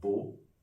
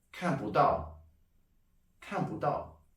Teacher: if the word after 不 has a fourth tone, 不 becomes a second tone